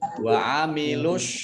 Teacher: alif lamnya alif lam syamsiyah tidak dibaca, langsung masuk ke huruf shad ditandai dengan shad ada tasdidnya. Wa amilus, shadnya double ada tasdidnya.